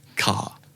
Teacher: Like almost no R, right? At the end.